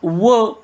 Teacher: दंतोष्ठ यामध्ये व हे व्यंजन आहे, ज्याचा उच्चार करताना दात आणि ओठ दोन्हीचाही उपयोग होतो. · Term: दंतोषष्ट